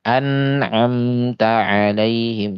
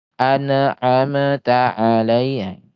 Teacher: Jadi mim dan nun ini walaupun dia sukun ternyata ada gunahnya. Gunahnya hanya satu harakat. Nah, namanya gunah naqis ya, gunah yang memang kurang itu dia.